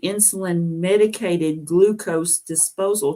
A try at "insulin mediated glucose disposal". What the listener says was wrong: mediated you said insulin medicated it's insulin mediated